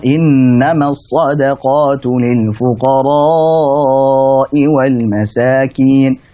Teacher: Karena di sini hukumnya adalah mat wajib muttasil. Ada huruf mat bertemu dengan hamzah dalam satu kata, sehingga wajib dibaca 4 harokat, nggak boleh 2 harokat.